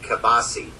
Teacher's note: now people say kielbasa but i don't say the l